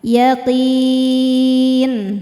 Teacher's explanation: Maka qofnya panjang boleh dua atau empat atau enam harakat. Asal konsisten dalam sekali baca. · Mad tabi'inya ya sukun sebelumnya kasrah, huruf yang disukunkannya adalah huruf nun. Maka qafnya panjang, boleh 2 atau 4 atau 6 harokat, asal konsisten dalam sekali baca. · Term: mad arid li sukun